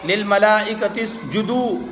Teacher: حروف مدہ کا واو آ رہا ہے، اس لیے دال کھینچ کر پڑھا جائے گا